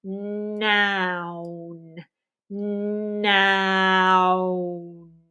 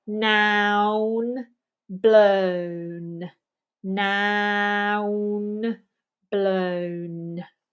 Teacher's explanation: the N is pronounced with the tongue touching behind the teeth